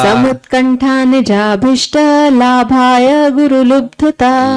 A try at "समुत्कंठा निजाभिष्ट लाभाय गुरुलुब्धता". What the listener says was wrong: लब्धता नहीं, आपने बोला नहीं, मैं बोल रहा हूँ लब्धता नहीं है, लुब्ध।